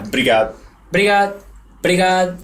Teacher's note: It's like there's no vowel in the beginning or vowel at the end.